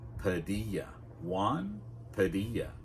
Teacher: that uh sound, so that's how we're going to pronounce it with that weak vowel sound at the beginning